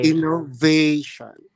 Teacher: The third syllable is that long A sound.